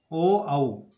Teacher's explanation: ओ औ कंठ और ओष्ठ से बोले जाते हैं, कंठ और होठ से बोले जाते हैं, इसलिए इनको कंठोष्टे कहा जाता है।